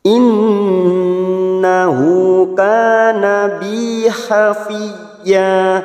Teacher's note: Nun yang bertasdid gunna musaddadah kita tahan selama 3 harokat.